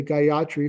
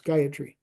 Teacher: There's no stress on the ya. All the syllables are level, so it's Gayatri.